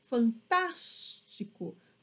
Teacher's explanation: ou seja sílaba mais forte porque eu falo fantástico percebam que o som ele fica mais forte no tá né justamente por conta do acento agudo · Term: sílaba tônica